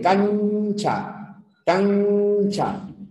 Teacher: la N en cancha es una N palatal